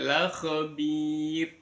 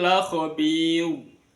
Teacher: maka wajib dibaca ro dibaca tarqik tipis